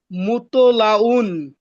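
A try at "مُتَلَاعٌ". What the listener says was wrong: হ্যা মাশাল্লাহ ঠিক আছে সুন্দর হইছে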